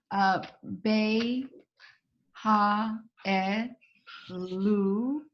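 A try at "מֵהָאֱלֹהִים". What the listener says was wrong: And the cholam, I want the top, the dot at the top left of the lamed, make more of an O sound. So meha elokim. Yeah, me ha elokim.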